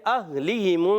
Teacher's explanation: حمزہ کو ہا سے ملانا ہے، ہا کی ادائیگی کلیئر رکھنی ہے